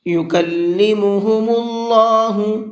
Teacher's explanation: اللہ کے لام کو پر کر کے پڑھیں گے اس لیے کہ اللہ کے لام سے پہلے پیش ہے